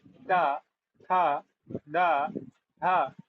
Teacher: तो जीभ कहाँ लग रही है? दांतों पे लग रही है।